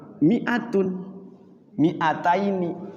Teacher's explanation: Mi-nya itu tulisannya ada madnya, ada huruf alifnya. Tapi dia bacanya tidak panjang.